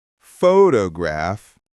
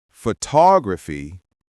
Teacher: photograph, stress on the first syllable, but photography, stress in the middle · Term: word stress, Word stress